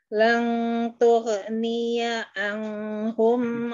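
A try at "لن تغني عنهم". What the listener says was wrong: ulang lagi aja ya daripada kepanjangan di sini anhum bukan ang.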